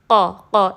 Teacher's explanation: اکثر لسان یعنی کہ زبان کا جو سب سے پچھلا حصہ ہے، بالمقابل اوپر کا نرم تالو جو ہماری سافٹ پیلٹ ہے اوپر سب سے پیچھے، تو جب وہ دونوں ملیں گے تو قاف ادا ہوگا، قا قا۔ اس میں ایئر نہیں آنی چاہیے، اس کو باریک بھی نہیں پڑھنا، ٹھیک ہے، یہ ہیوی لیٹر ہے جیسا کہ میں نے آپ کو بتایا حروف مستعلیہ میں سے، تو اس کو ہم پڑھیں گے قا۔